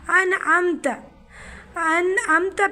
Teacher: انعمتا پہ بھی گنہ نہیں ہوگا، اس کو ظاہر کر کے پڑھیں گے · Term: اظہار